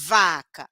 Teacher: o ponto articulatório igual da letra F, o modo articulatório igual da letra F, e a sonoridade diferente. Vibra o pescoço, liga o motorzinho, que são aqueles pares mínimos que eu falei para vocês. · O dente de cima encostando no lábio de baixo, vibra o pescoço. Então, o ponto articulatório igual da letra F, o modo articulatório igual da letra F, e a sonoridade diferente.